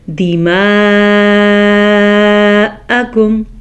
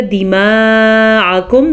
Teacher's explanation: حمزہ زبر ا، اس کو عین میں نہیں کنورٹ کرنا۔ ٹھیک ہے، اگر کوئی پڑھتا ہے دماءکم تو اس نے عین لگا دیا، بھئی جب یہاں پہ ہمارے پاس حمزہ ہے تو ہم کسی لفظ کو کسی دوسرے لفظ میں کیسے چینج کر سکتے ہیں؟